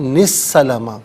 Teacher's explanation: اس سے السلام کی سین کے ساتھ ملائیں گے، درمیان میں سے الف یعنی حمزہ کو حذف کیا جائے گا